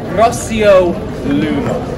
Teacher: You'll notice I did a rolled R there, because this is a new skill that I've just acquired.